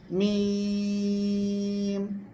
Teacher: দ্রুত উচ্চারণ করতে হবে এবং সহজে উচ্চারিত হবে মিম এই যে মাখরাজ কি দুই ঠোঁটের শুকনো জায়গা এই শুকনো জায়গা থেকে দ্রুত উচ্চারণ করতে হবে এবং সহজে মিম